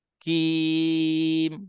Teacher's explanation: Kaf ni memang dia ada istifal, dia ada rendah dan dia ada tipis.